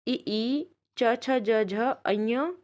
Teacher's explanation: यह वर्ण हमारे कहाँ से बोले जाते हैं, तालु से बोले जाते हैं